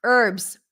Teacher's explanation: in American English the H is not pronounced in the word herbs